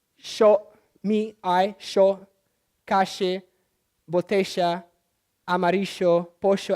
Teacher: everything that has double L and Y becomes a sh